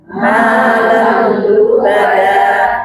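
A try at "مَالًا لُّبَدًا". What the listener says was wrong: Malal lubada. Lamnya tasydid, tong dipanjangkan. Malal. Nah, itu yang jadi tidak kompak, ya. Malal lubada.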